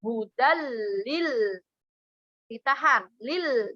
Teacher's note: Lil, jangan dilepas. Kalau dilepas, lil, nah akan timbul seperti tawalud